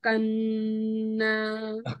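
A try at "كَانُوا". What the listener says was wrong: কান্না না, এটা জের হবে আর কি, এটা জের দেওয়া হয়নি, দেওয়ার ঠিক করে দেবো ইনশাল্লাহ।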